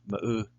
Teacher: But in the case of ma'u, smoke, you would hear the glottal stop.